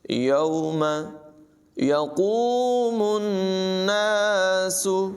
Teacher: قاف کی آواز پر ہوگی، یہاں پر نون مشدد ہے، اس میں غنہ کریں گے